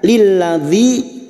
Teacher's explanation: Lil masuk pada huruf lam berikutnya. Lilladzi kasrah bertemu ya sukun 2 harokat